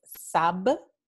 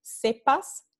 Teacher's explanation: la bilabial oclusiva sonora B a bilabial oclusiva sorda P